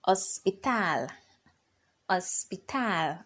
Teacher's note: the stress is on the last syllable which is tal so you raise your voice over there · the H is silent in Spanish